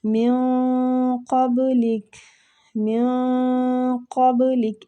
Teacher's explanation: ادھر قاف پہ مستعلیہ حروف ہے، نون پہ اخفا بھی ہوگا